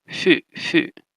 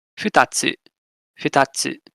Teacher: wherever you have ha combined with u, it becomes fu, becomes that bilabial fricative